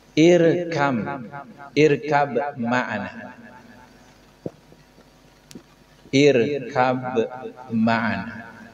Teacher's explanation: Sebelum bacaan ini diidghamkan, ada bunyi qalqalah.